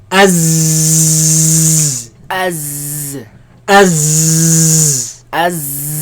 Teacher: There's a lot of commotion, a lot of air, a lot of movement of air between the tongue and the teeth.